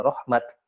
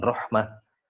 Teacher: Ya, ada beberapa alasan ya dari sisi rosem, bahkan dari sisi dialek ya, sebagian qabilah membaca dengan biasanya membacanya seperti contoh misalnya rahmatun ya. Ya, kalau di waqaf sebagian qabilah membacanya rahmat ya, bukan rahmah.